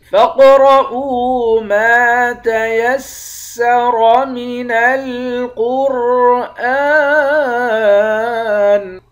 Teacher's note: قاف اور را ان دونوں حروف کو موٹا پڑھیں گے · میم کے بعد الف ہے، الف حروف مدہ ہے، ایک الف کے مقدار کھینچ کر پڑھیں گے